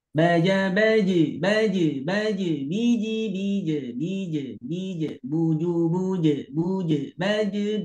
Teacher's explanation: huruf jim ketika jimnya itu sukun, maka dipantulkan dan bunyinya itu ke bunyi e. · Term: huruf qalqalahnya